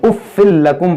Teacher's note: یہاں پر دیکھیں تنوین کے بعد لام ہے تو یہاں پر ادغام کریں گے، اُفِّل لَكُمْ پڑھیں گے.